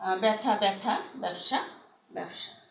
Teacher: আদ্যবর্ণে জফলা যুক্ত হলে জফলা যুক্ত ব্যঞ্জনটি একারান্ত উচ্চারণ হবে।